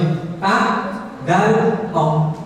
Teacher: Ada di ujung lidah dengan nempel pada ujung dua gigi seri atas.